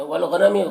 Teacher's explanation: غین کو پر پڑھیں گے، حروف مستعلیہ میں سے ہے